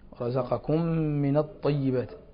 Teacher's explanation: الميم ساكنة قبل الميم حكمها الإدغام